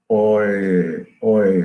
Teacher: Okay, so or it is, if you say it slowly, it is oi, oi. So the tongue is coming from back to front to make this vowel quality within that short duration. · But if you look at U and it has the diphthongal quality. It is going from U to E.